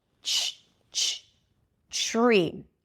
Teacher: The secret here is to connect the T and the R and then it turns into a ch sound. Ch tree. Do you hear that?